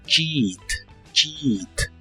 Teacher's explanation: las letras e a de esta palabra se pronuncian como una I larga o doble